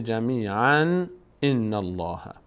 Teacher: بعد از تنوین چی آمده الف آمده حمزه آمده از حروف حلقی اس یعنی باید اینجا اظهار صورت بگیره یعنی تنوین رو باید اظهار کنی میشه چی ی الله جمیعا